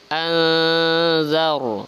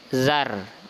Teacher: ro-nya dibaca tebal ya, karena sebelum huruf ro itu ada huruf yang berharokat fathah atau baris di atas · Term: ra tafkhim